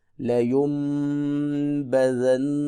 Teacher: یہاں صرف میم پڑھنی ہے، نون نہیں پڑھنا، کیونکہ نون جو ہے وہ میم سے بدل چکا ہے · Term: اقلاب